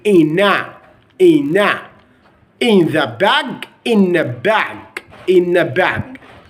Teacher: if n followed by th actually you're not going to consider the th sound in the in American accent will be in in in the